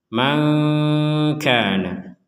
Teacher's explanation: nun sukun bertemu dengan kaf, maka kita harus membacanya dengan samar. Samar sebagaimana sudah diulang-ulang sebelumnya adalah antara dengung dan jelas.